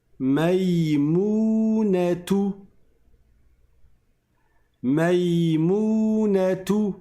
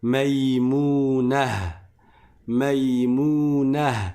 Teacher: Et je prononce le ha à la fin, à la place du ta.